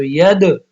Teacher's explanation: اب دال ساکن آ گیا اور دال پہ قلقلہ ہوتا ہے